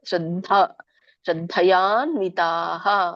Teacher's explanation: ದಕ್ಕೆ ದೊಡ್ಡ ದ ಮಹಾಪ್ರಾಣ ಇದೆ